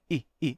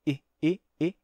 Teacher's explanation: o i breve terminou se abrindo